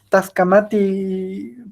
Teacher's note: lo curioso es que no ocupaba tla, ocupaba solo la T